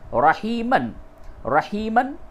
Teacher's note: جب وقف کریں گے تو تنوین کی جو آواز ہے اس کو الف سے تبدیل کر کے وقف کریں گے، رحیمہ ہوگا۔